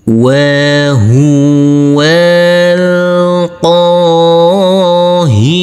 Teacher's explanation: Di sini huruf wau langsung masuk ke huruf lam yang bersukun. Huruf alifnya kita anggap tidak ada. Dan di sini huruf wau kita baca pendek.